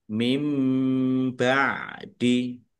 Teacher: nun sukun bertemu dengan huruf ba, bacaan iklab, baca membalik, nunnya dibaca mim.